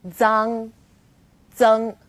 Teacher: Its pronunciation is quite similar to the DS sound in English, like cards, but you need to move the tip of your tongue closer to the back of your teeth